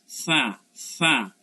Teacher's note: জিহ্বার আগা উপরের দাঁতের আগার সাথে লাগে বাতাস থেকে উচ্চারণ হয়, মনে হচ্ছে বাতাসটা আপনি চাপায় ধরতেছেন,